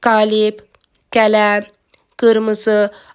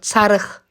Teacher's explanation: Amma sözün sonu q ilə bitəndə tək qalanda çox vaxt x kimi tələffüz olunur. Çarıx. Buna görə də hamısında olduğu kimi tələffüz olundu q kimi.